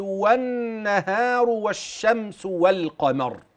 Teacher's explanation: وأدغمت اللام في النون من كلمة والنهار، وكذا اللام في الشين من والشمس، وبينتها عند القاف من والقمر